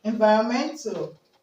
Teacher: environmental the stress is going to be on men okay so it's going to be on men despite the fact